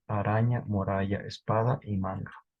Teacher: la a acentuada fue predominantemente de timbre medio vaca clavo y resultó palatal en araña muralla espada y manga